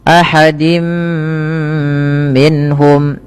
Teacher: yaitu tanwinnya dimasukkan ke huruf mim mim dan ditahan. · Kemudian ahadim minhum, pada lafal dim minhum, yaitu tanwinnya dimasukkan ke huruf mim dan ditahan. Dan inilah yang kita kenal dengan bacaan idgham bi gunnah, yaitu idghamnya memasukkan surat tanwin kepada mim dan ditahan, diganti bunyinya menjadi bunyi mim. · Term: idgham bighunah